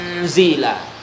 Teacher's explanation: Bunyi nun tetap masuk ke huruf zal dengan dengung. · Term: Ikhfa